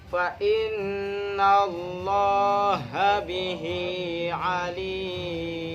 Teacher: Fa innallah lafaz Allah didahului oleh fathah maka dinamakan bacaan tafhim yang artinya tebal. Itu bacanya Allah bukan la ya.